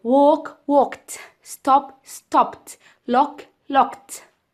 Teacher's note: the ed in the next column sounds like ta because it's preceded by a voiceless sound